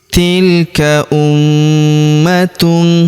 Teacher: Tilka ummatun. Perhatikan huruf ma kita tahan dan kita tekan, serta kita dengungkan 2-3 harokat ya, karena terdapat tanda tasydid di atasnya. Tilka ummatun, kemudian tanwin huruf tun ya, ta marbutah, bertemu huruf qa, maka tanwin unnya melebur ke huruf qa.